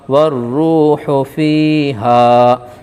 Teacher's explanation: ہوگا۔ والروح میں واو مدہ ہے، تھوڑا کھینچ کر پڑھیں گے۔ فی ہا یا ساکن سے پہلے زیر ہے اس لیے یہ مدہ ہوگا، تھوڑا کھینچ کر پڑھیں گے۔